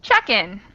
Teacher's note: usually there isn't much of a pause between check and in